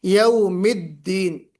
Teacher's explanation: دال نکالتے ہوئے آواز میں جہر بھی ہو اور شدت بھی ہو